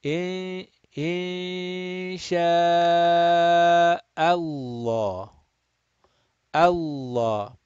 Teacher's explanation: Make sure that Hamza is done flat. Just because we are going to round this Lam, do not round the Hamza. · we are going to recite this lam of Allah mufakham, rounded, heavy, full mouth. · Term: lamul jalala